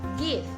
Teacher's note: give is a velar voice stop consonant